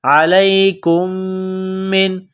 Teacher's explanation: علیکم من، میم ساکن کے بعد دوسری میم ہے جو مشدد ہے تو کاف کو میم کے ساتھ ملانا ہے، میم میں غنہ کریں گے، آواز ناک میں چھپائیں گے